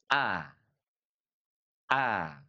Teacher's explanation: Huruf hamzah itu diucapkan dari pangkal tenggorokan kita, aqsal halqi, ya. Dengan sedikit penekanan karena memang dia memiliki sifat syiddah, a, a.